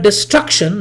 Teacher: in the word destruction the stress falls on you know the second syllable